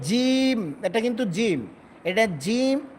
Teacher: জিমটা কিন্তু পাতলা হবে এবং শক্ত হবে।